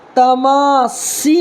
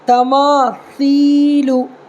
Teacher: یعنی زبان کی نوک کو دانت کے نیچے دبانا ہے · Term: ثا